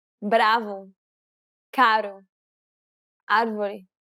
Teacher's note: English speakers can sometimes pronounce this sound when saying the word better or butter quickly and lazily. The key here is to make sure that the tongue strikes the gum ridge very, very quickly. Striking in a down-up fashion may help to pronounce this sound. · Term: Portuguese R